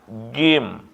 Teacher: Jim itu lidah ditekan ke atas langit-langit tengah.